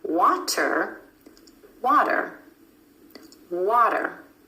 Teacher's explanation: The flap T is really just a D sound, and this flap T happens when T is in the middle of words in between 2 vowel sounds.